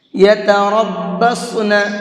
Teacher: اس لفظ کے اندر را کو اور صاد کو، ان دونوں کو پر کر کے پڑھیں گے